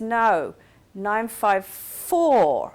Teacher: he does a falling a very strong falling intonation pattern